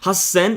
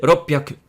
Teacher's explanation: there is a double K sound in gakko, there's a double S sound in hassen, and there's a double P sound in ropyaku.